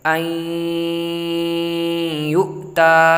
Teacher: دیکھیے حمزہ یا زبر ای، یا حمزہ پیش یو، تا کھڑا زبر تا، اب ادغام کریں گے این یو تا، حمزہ نون زبر ان نہیں پڑھیں گے اس کو، اور یا میں ملائیں گے حمزہ کو، این یو تا۔